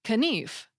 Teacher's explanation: the K in knife, which was spelled K-N-I-F, was pronounced, so the word sounded like knief